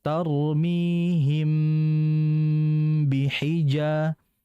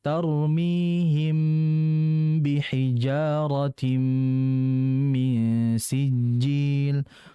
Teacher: Ya, ikhfa syafawi. Artinya bacanya ya dengan gunnah, dan pasti ada di situ yang namanya gunnah itu berarti ditahan terlebih dahulu.